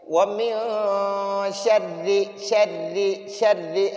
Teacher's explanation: را کو باریک پڑھنا کیونکہ را کے نیچے زیر ہے